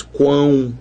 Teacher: você realmente escuta 3 sons, o U, o A e o U de novo aqui. É um O, mas que você escuta o U, não é verdade? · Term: tritongos nasais